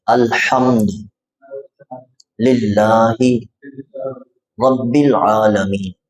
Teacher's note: یہ جو لفظ ہے الحمد، ہاں کو آپ نے تھوڑا سا حلق سے نکالنا ہے۔